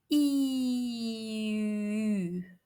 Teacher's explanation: the idea here is to blend the E position with the lip rounding of ooh after you round your lips extend and then progressively round It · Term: the sound U